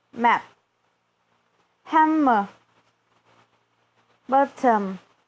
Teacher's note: produced with the air coming through your nose with m. That is achieved by closing your lips, whereas with n, the lips are open and your tongue touching the top of your mouth behind your teeth block the air.